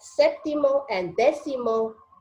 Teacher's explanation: sétimo and décimo the stress is on the first syllable that's what the accent mark has involves those are the two